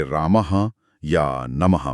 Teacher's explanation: विसर्ग ह, ये हमेशा किसी स्वर के बाद लगता है और हल्की ह जैसी ध्वनि देता है